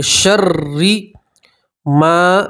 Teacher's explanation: را مشدد کے نیچے زیر ہے تو را کو آپ باریک پڑھیں گے، پتلا پڑھیں گے